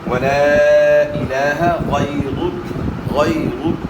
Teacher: کھڑا زبر ہے تو ایک الف کی مقدار کے برابر لام کھڑے زبر کو کھینچنا ہے